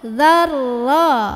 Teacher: Dzal gigit, ujung lidah ketemu ujung gigi, tekan ke ro. Dzarra. Jadi jangan za-nya dipanjangin.